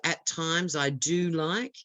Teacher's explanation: she put the stress on the word do